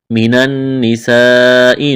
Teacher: نون مشدد ہے، آواز ناک میں چھپائیں گے، غنہ کریں گے، سین میں سیٹی کی آواز پیدا کریں گے، سین کو باریک کرنا ہے۔